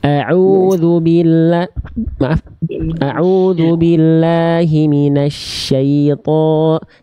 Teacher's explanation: Jadi shin itu dilafalkan dari tengah lidah yang diarahkan ke langit-langit, menyebar udara dari mulut, nama sifatnya tafasyi. Nggak perlu pakai bibir.